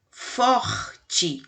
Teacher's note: A gente arranha lá a garganta para poder falar o R